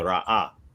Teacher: Like you say, like where you have the resh aleph hey, there's a glottal stop there, right? So the aleph represents a glottal stop, and then the ha is vocalized, right?